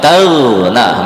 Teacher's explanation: Huruf ghain itu mengalir ketika dia sukun. Jangan tagna. · Yang benar taghna, mengalir ghain sukunnya. Taghna. Itu ada aliran anginnya.